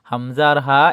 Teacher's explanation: হামজা হালকে শুরু হইতে উচ্চারণ হবে